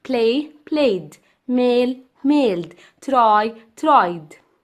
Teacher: Past tense of verbs in English with ed endings are pronounced in three different ways: ta, da, id. So the ed in the first column sounds like da because it's preceded by a voiced sound